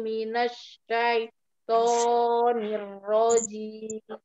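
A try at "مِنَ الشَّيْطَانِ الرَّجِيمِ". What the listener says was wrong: Mir rajim. Jadi huruf ja kan kasroh ya, jim. Jadi kalau kasroh itu menurunkan rahang. Mirrojim. bukan ditarik, bukan ke samping, tapi dia turun. Mirrojim. Ya, nirrojim. Tidak kesamping.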